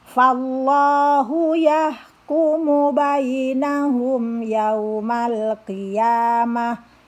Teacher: fa di sini walaupun ada alif tidak dibaca panjang, tidak boleh dibaca fallahu, tidak, justru dibaca pendek.